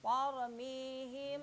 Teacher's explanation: Ihfa sapawi ini harus gunnah, tidak boleh selewat.